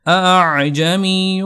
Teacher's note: دوسرا حمزہ ہوگا اس کو آپ نے جھٹکے اور جو مدہ کی آواز ہوتی ہے نا اس کے درمیان سے پڑھنا ہے، یعنی سافٹ بالکل آواز آپ نے نکالنی ہے، نرم آواز سے اس کو ادا کرنا ہے۔ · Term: تسہیل